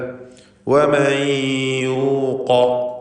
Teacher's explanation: ഖാഫിന് തഫ്ഖീം കൊടുക്കുക. സ്വരഭാരത്തോടെ ഖാഫിനെ ഉച്ചരിക്കുക. ഇസ്തിഅലാഇൻ്റെ ഹർഫാണെന്ന് സൂചിപ്പിച്ചു.